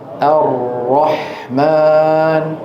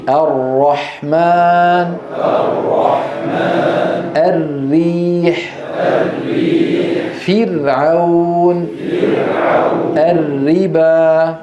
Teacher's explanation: المجرى ضيق مجرى الراء ضيق لا هو واسع ولا هو مقفول تماما